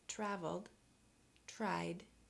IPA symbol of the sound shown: d